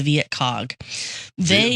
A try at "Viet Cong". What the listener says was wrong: You said cog. You said cog.